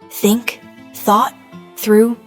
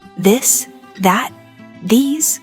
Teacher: For think, gently place your tongue between your teeth and push air out. For this, your tongue touches the same position, but you engage your vocal cords to produce a voiced sound.